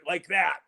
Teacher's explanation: my voice has vocal fry to it